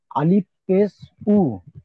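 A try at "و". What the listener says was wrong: আলিফ নয় ভাই এটা।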